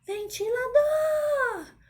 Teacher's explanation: eu fiquei mais tempo na última sílaba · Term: sílaba tônica